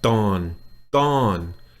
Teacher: That's a hard hit. Dawn with a falling tone, and then slightly roll your R.